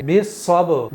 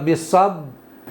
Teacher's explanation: دونوں ہونٹ آپس میں مل رہے ہیں لیکن فوراً الگ ہٹ رہے ہیں، لیکن میں کہوں اگر بالصبر تو اس طرح سے قلقلہ نہیں ہوگا۔